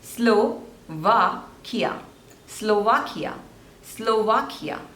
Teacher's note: So there are 3 syllables and the stress is on the second one.